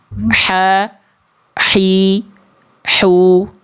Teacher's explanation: H kecil dilafalkan dari tengah tenggorokan. Kalau dia tepat dilafalkan dari sini, Bunda, tengah tenggorokan, maka dia akan mengalirkan nafas yang karakternya berbisik, Bunda. · Kalau dia tepat dilafalkan dari sini, Bunda, tengah tenggorokan, maka dia akan mengalirkan nafas yang karakternya berbisik, Bunda. Lembut, bersih, clean.